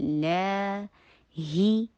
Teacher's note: اب make sure کہ ای کی ساؤنڈ آئے. لا، جب بھی اللہ سبحانہ وتعالیٰ کا نام آتا ہے اس کے مڈل والی جو لام ہے اس کو لمبا کر کے پڑھا جاتا ہے، لا ہی، ہا کے نیچے کسرہ، پھر سے ای کی ساؤنڈ کرنی ہے.